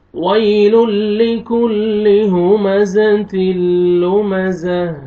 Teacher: تا کو ہمیں چینج کریں، ہا کا ساؤنڈ آنا چاہیے